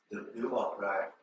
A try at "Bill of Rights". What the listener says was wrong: Bill of Rights. So you need to put the S sound on the end. Rights. Bill of Rights. So that means there's 2 or more. If there's just one, it's right. When there's 2 or more, it's rights. Rights. So, you know, amendments, yeah, so that's going to be more than one.